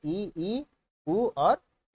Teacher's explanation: मुख लगभग बंद रहता है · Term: समृत